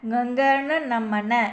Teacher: இது வந்து மூக்கு வழியாதான் பிறக்குது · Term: மெல்லின மெய்யெழுத்துக்கள்